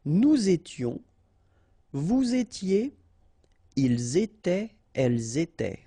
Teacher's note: final S not pronounced, and then you make the liaison.